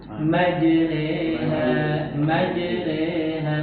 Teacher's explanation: Huruf jim ingat jangan mendesis